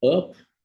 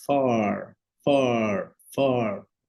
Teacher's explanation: aqui pra letra A em si né a gente tem o a curto né up né e no Far a gente vai ter esse alongamento